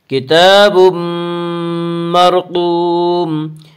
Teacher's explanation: کتاب مرقوم میں ادغام بالغنہ ہوگا۔ اس کا قاعدہ ہے کہ نون ساکن اور تنوین کے بعد اگر حروف یرملون میں سے کوئی حرف آئے تو ادغام ہوگا۔